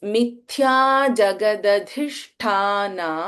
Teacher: ಇಸ್ ಮಹಾಪ್ರಾಣ ಮಿಥ್ಯ ಜಗದಧಿಷ್ಠಾನ ಇನ್ ಜಗದಧಿಷ್ಠಾನ ದ first ದ is ಅಲ್ಪಪ್ರಾಣದ ದ second one ಧಿ ಇಸ್ ಮಹಾಪ್ರಾಣ ಧ · and we have ಷ that is ಷಣ್ಮುಖ ಶೆನ್ we have ಮಹಾಪ್ರಾಣ ಇನ್ ಠ · Then we have Mahaprana Tha in Shtha · In Jagadadhishthana, the first Da is Alpaprana Da. The second one, Dhi, is Mahaprana Dha.